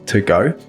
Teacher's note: To, when it's the particle of an infinitive, becomes /tə/ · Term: weak forms